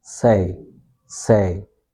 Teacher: This is a diff thong. So first you pronounce e okay and then you pronounce i.